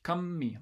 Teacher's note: you're supposed to kind of hold these nasals for a fair amount of time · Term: geminate segments